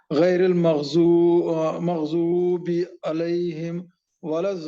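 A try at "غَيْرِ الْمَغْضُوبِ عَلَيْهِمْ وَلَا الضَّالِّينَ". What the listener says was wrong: देखिए मग़ज़ूब जब बोल रहे हैं ज़ाद को शेष निकालिए। ज़ाद का मखरज मैंने बताया था कि जब ज़ाद को कहाँ से निकालते हैं, ज़ाद को कहाँ से निकालते हैं? ज़बान बाहर निकालेंगे तो फिर बोलेंगे कैसे आप? नहीं, ये डाढ़ है ना, डाढ़ डाढ़ उधर ऊपर लगाएंगे।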